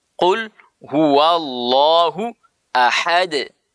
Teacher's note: Ahad itu namanya qalqalah. Ya, terpantul.